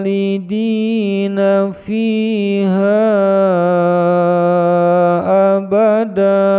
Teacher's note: Bacaan tanwin fathah menjadi mad iwal ketika diwakufkan, dipanjangkan dua ketukan.